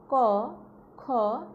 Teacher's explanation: এ জাতীয় ধ্বনি উচ্চারণকালে জিহ্বার মূল তালুর কোমল অংশ স্পর্শ করে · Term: কণ্ঠ ধ্বনি